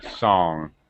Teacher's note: Yeah, NG, because sometimes, like sing, you don't hear the g sound.